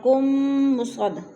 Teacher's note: الیکم مصدقا لما بین یدی من التوراۃ، الی پہ یا لین ہے، اور کم مصد، 2 میم اکٹھے ہو رہے ہیں، ایک میم مشدد ہے ایک میم ساکن، تو ادھر ادغام ہو رہا ہے، میم کو میم کے ساتھ ملا کر پڑھنا ہے